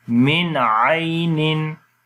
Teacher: तो अगर नून साकिन के बाद हुरूफ हलकी में से कोई आ जाए तो वहाँ पर इजहार होता है। नून की आवाज़ को जाहिर करके पढ़ते हैं